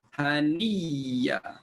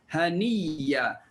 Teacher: Hamzah tukar jadi ya pertama masuk dalam ya kedua, bunyinya haniya. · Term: idgham